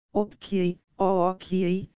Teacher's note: Um alongamento vocálico forma uma mora dobrada.